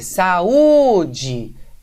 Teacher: você vai ver que a sílaba tônica é o U, não é? É o U sozinho.